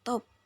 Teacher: pada kata top diucapkan top dengan t apikodental